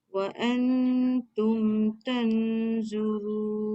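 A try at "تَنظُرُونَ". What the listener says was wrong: Tan tu dikurang sikit tebal. Wa antum tanzurun. Lu. Yang tadi tu kurang sikit lagi.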